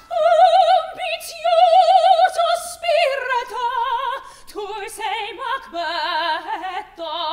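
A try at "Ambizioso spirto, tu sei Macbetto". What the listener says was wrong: There's two T's in Macbetto. I want to hear them.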